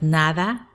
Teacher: you might tend to go over it really fast so that it might at the end sound nara